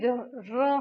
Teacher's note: हमारी जो जीभ है वो 2 से 3 बार कंपन करती है, उसी को कहते हैं हम प्रकंपित व्यंजन।